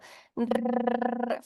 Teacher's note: r y la vibrante múltiple la r En estos casos el la r sale a través de Pequeños choques de la lengua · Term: vibrantes